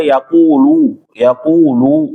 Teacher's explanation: lunya juga bersih berhentinya bersih jangan sampai kayak ada tambahan wau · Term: tawalud